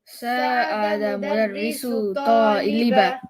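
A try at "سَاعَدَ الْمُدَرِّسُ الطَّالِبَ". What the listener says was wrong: I need you to say the L here. Sa'ada al-mudarrisu at-taliba. Mudarrisu at-taliba.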